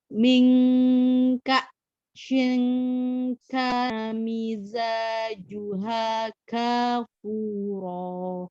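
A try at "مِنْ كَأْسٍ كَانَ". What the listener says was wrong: Sinnya berubah jadi shin, nggak boleh. Ka singkana. Hati-hati ya, sinnya jangan kepleset ya.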